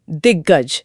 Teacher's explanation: हां और उसकी जगह एक आधा ग ले लेता है। मतलब क और ग मिलकर ग बन गए।